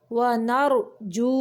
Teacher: را موٹا پڑھیں گے کیونکہ ساکن کے بعد زبر ہے، ونرجو، یہ واو مدہ ہے، واو کے پچھلے حرف کے اوپر پیش ہے اس لیے یہ واو مدہ ہے، اس کی 2 حرکات عربی جتنی لمبائی ہے۔